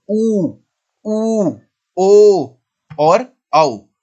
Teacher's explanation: जब हम बोलते हैं तो हमारे होंठ गोलाकार हो जाते हैं, हमारे होंठों की आकृति गोल सी दिखने लगती है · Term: वृत्तमुखी स्वर